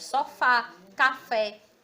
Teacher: o som do acento agudo ele é um som aberto